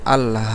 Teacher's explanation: তাহলে আল হা, এই আলিফকে আমরা টানতেছি না, বলতেছি আল, কিন্তু হার খাড়া জবর একটু টেনে পড়তেছি